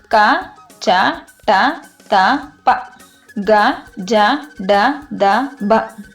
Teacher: ಕಡಿಮೆ ಅಥವಾ ಅಲ್ಪ ಉಸಿರಿನೊಂದಿಗೆ ಉಚ್ಚರಿಸಲ್ಪಡುವ ಅಕ್ಷರಗಳನ್ನು ಅಲ್ಪಪ್ರಾಣ ಅಕ್ಷರಗಳು ಎಂದು ಕರೆಯುತ್ತೇವೆ